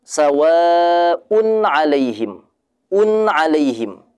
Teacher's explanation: Itu ada gunnahnya tapi tidak terlalu kuat.